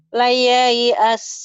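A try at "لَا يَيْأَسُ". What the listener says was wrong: La-nya panjang.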